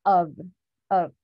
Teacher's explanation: when we say this word o f it sounds like we're saying o v